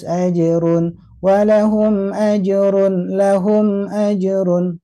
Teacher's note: kesan mantulnya harus tetap juga terdengar mengalir jangan sampai tertahan